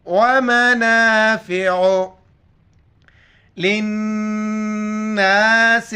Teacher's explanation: نون پر غنہ شد ہے، یہاں پر غنہ کریں گے. لام زیر لے نون الف زبر نا، لام نون زیر لن نون الف زبر نا سین زیر سے للناس.